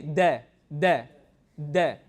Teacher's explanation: vocal cords you don't feel anything right now say de de it's slight because it's really quick but there is slight vibrations in the vocal cord